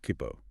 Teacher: The small tsu indicates a slight pause or a glottal stop before doubling the next consonant sound, like in kippo.